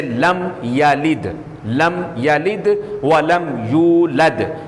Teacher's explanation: تیسری قسم ہے اظہار شفوی کی، اس میں کسی قسم کا کوئی غنہ نہیں ہوگا، جیسے لم یلد، لم یلد ولم یولد، تو وہاں پر غنہ نہیں ہوگا۔